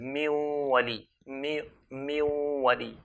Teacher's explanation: The nun sakina, if it meets a waw, we're going to merge it. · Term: al-idgham